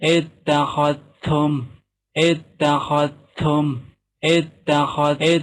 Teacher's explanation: Jadi dalnya lebur kepada ta. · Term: idgham mutaqaribain